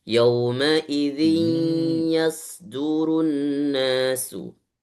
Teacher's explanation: Yauma idzi, ketika baca zi itu masukkan suara ke hidung